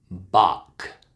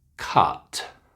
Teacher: make sure you got that strong ah for all of their short u words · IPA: /ʌ/